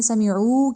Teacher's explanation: واو سے پہلے پیش آ رہی تھی تو لمبا تو کرنا ہے